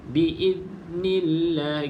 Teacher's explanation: praktiskan untuk ujung lidah tu kita gigit sedikit lah supaya tidak ada lantunan. Okay, biasakan untuk kita gigit sedikit.